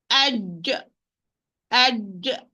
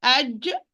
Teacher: middle part of the tongue will be raised towards the hard palate, making full contact, no space and in between. That's why the sound is blocked here. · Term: Jim